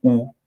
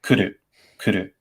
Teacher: The difference between rounding, as in u, or compression, as in the Japanese u sound.